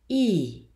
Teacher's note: This is a hybrid vowel that is in between closed I, E, and I, open I.